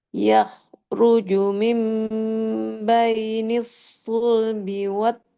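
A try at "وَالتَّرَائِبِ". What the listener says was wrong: Taro, ro-nya tebalkan. Tambah lagi tebalnya. Taro.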